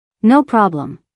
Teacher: Notice the stress on no. The receptionist laughs first, then puts emphasis on no by lengthening the word.